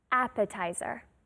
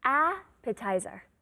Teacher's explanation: emphasis on the first syllable